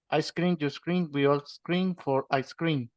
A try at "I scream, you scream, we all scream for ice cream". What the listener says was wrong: Nice. Very nice.